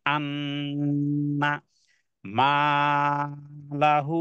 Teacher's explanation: নুনের উপরে তাসদিদ থাকার কারণে এটাকে ওয়াজিব গুন্না কিন্তু টান দেয়া যাবে না শুধু গুন্নাই করতে হবে